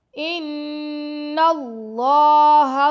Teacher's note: نون پر غنہ کر رہے ہیں اور اللہ کے نام کو موٹا پڑھ رہے ہیں